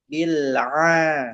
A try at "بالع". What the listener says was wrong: Tanpa mantul. Tanpa mantul lam. Bil'a.